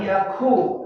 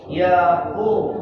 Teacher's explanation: jangan yaku tapi yaqu. Yaqulu dalam tenggorokan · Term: qaf